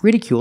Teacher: make the long u sound plus the dark L at the end of the word